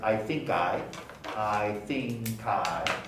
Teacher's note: the K of think is followed by I. So linking takes place.